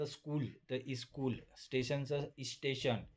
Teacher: काही भाषांमध्ये शब्दांच्या सुरुवातीला जोडाक्षर आल्यास त्याला उच्चार करणे कठीण जाते. अशा वेळी उच्चार सुलभ करण्यासाठी शब्दाच्या सुरुवातीला एखादा स्वर लावला जातो. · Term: स्वरागमन प्रोथिसिस